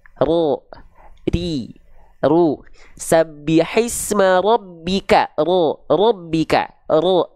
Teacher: jadi dia tetap digetarkan dengan getaran yang tak terlampau banyak · Jadi huruf ro itu dilafalkan hanya sedikit saja getarannya. Tapi walaupun sedikit, dia tetap tegas, lugas, dan jelas. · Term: takrir